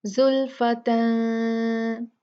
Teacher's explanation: सीन जो है वो इख्फा के हरूफ में से है, तो हम यहाँ पर इख्फा करेंगे, नून को गुन्ना करके पढ़ेंगे, उसको क्लियर नहीं पढ़ेंगे, साफ नहीं पढ़ेंगे।